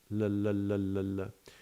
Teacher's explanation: the place where the tongue is placed in what is called the alveolar ridge behind the teeth. So there's the teeth and there's the alveolar ridge, and that's where you put the tongue.